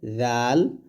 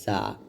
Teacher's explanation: জাল হবে জিহ্বাটা উপরে দাঁতের আগে লাগিয়ে জাল, আর জা হবে জিহ্বাটা নিচে দাঁতের মাঝে লাগিয়ে জা। তো এখানে মাখরাজের মধ্যে পার্থক্য হচ্ছে জাল এবং জা দুটোই পাতলা অক্ষর, তবে জাল হবে জিহ্বা উপরের দাঁতের আগে লাগবে, উপরের 2 দাঁতের আগায়।